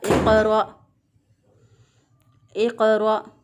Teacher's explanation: ये हमज़ा है। इसको हम झटका दे के पढ़ेंगे।